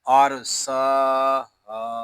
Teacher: ہا کو بھی ہم ایک الف تک کھینچ کر پڑھیں گے کیونکہ یہاں الف مدہ ہو رہا ہے. پوری آیت کو ہم ایسے پڑھیں گے والجبال ارساہا.